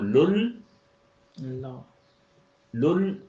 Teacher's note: اس کے اوپر کوئی حرکت نہیں ہے. اگلے لام کے اوپر شد ہے تو وہ 2 دفعہ بولا جائے گا. تو لل، لل شد پہ آ کے جزوی شد ہوگی نا تو رک گیا.